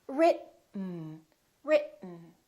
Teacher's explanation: Keep your tongue up. Don't release it. Let the air just come out through your nose for the N sound. · So we hold our tongue right here behind our upper teeth and we don't release it. We smoothly just go directly to the N sound without moving our tongue down.